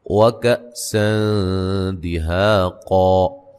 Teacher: یہاں حمزہ کو جھٹکے سے ادا کریں گے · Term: حمزہ ساکن